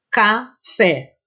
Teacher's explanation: café tem uma sílaba que é mais forte, fé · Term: sílaba tônica